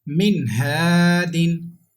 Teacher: Okay, ha is halki letter and ha has come after noon sakin, that's why we have to read without gunna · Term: izhar